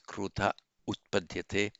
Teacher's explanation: Remember the krudha, the aha, followed by a vowel other than a short ah, here followed by an u. All that happens is the visarga drops. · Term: vowel hiatus